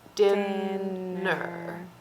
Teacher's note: it's very subtle that er because it doesn't open up your mouth like a vowel should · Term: er sound